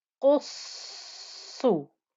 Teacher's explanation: You can hear the sound of the sad going through both of those sads because it's a double sad.